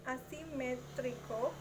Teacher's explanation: pronounced with S not Z because of morpheme boundary